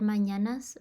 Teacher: this would be the palatal nasal ñ